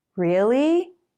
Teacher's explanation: to sound surprised you often make the rising tone longer